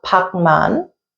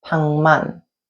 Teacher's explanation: The Giyeok sound is nasalized and it makes a ieung sound. · the Giyeok sound becomes nasalized before a nieun or mieum initial. And when the Giyeok batchim sound is nasalized, it makes a ieung sound.